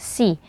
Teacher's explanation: ada huruf Sin berharakat kasrah dibaca tipis dan disertai dengan ee aliran nafas dan suara ya La uqosimu